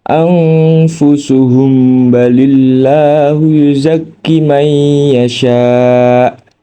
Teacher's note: Cara membacanya dibaca samar antara mim sukun dengan ba disertai dengung 1 alif.